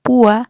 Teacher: al separar la palabra decimos púa y hacemos fuerte a una vocal que normalmente sería débil